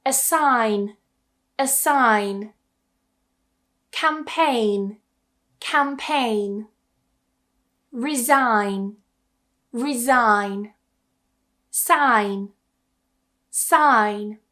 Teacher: when we have the letters G and N together at the end or towards the end of a word, we tend to remove that G completely. So, don't try and pronounce it.